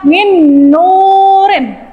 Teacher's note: idgham bi gunnah dibaca masuk dengan Dengung.